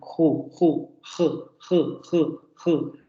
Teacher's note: se articula en la zona velar la parte posterior de la lengua se pega el velo